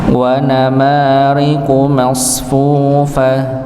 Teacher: wa namariqu ma-nya panjang dua harakat